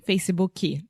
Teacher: the very strong tendency that you cute Brazilians have to add a chi to the end of everything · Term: supporting vowel